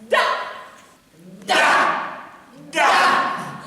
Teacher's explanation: La consonne D, par exemple, se prononce en donnant du bout de la langue au-dessus des dents d'en haut.